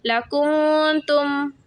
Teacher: یہاں نون ساکن پہ غنہ ہوگا، ناک میں آواز بٹھائی جائے گی